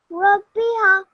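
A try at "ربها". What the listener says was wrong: Just remember, you're making, I think, the ba a little longer than the ra and the ha. Remember, the ra, ba, and ha, how long should they be? 1 second.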